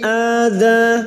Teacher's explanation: hamzah yang berharokat alif kecil di atas mad badal, cabang dari mad tabi'i, 2 harokat kita panjangkan